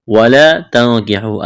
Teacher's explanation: الف مدہ ہے، ایک الف کے برابر کھینچنا ہے۔ اخفا کریں گے، نون ساکن کے بعد کاف ہے، واو مدہ ہے، ایک الف کے برابر کھینچنا ہے۔